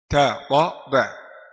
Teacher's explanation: Ta dal ta, ujung lidah bertemu akar gigi di atas makhrajnya. Ujung lidah bertemu gusi.